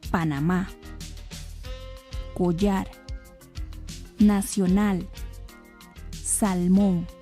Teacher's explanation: todas las palabras llevan el acento en la última sílaba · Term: agudas